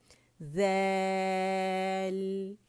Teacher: دیل دال نہیں ہے یہ، دیل، اور نہ دیل ہے، نہ امالہ کریں گے اور نہ کھڑا پڑیں گے اسے، ٹھیک ہے. دال نہیں ہے یہ ہے دیل، باریک پڑیں گے اسے